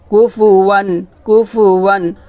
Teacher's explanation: এটা হচ্ছে ইজহার গুন্না, গুন্না করা যাবে না।